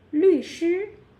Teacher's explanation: So 律 which is the falling tone, and 师 that is the first tone.